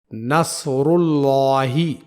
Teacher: یہاں لفظ اللہ کے لام کو پر یعنی موٹا پڑھا جائے گا